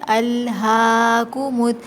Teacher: جب لام ساکن ہو تو لام پہ تھوڑا سا ہولڈ کرتے ہیں